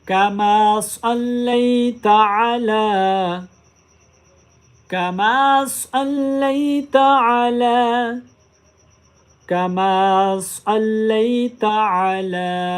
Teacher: لام کو 3 الف کی مقدار لمبا کریں